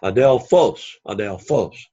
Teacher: the accent is on the last syllable